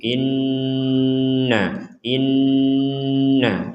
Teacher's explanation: in jadi inti dari dengung itualahga hidung kita itu berdengung in bisa kita rasakan sendiri bahwa rongga rongga hidung kita itu berdengung